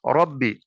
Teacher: را کے اوپر زبر ہے، اسے پر کر کے پڑھیں گے